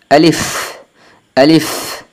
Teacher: আলিফ বলার সময় দুটি বিষয় খেয়াল করতে হবে দুই ঠোঁট লাগবে না এবং লম্বা হবে না